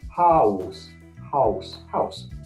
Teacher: A diphthong is where you change one vowel to another, all within the same syllable. So if I say the word house, that ow is two different vowels. It's a and oo.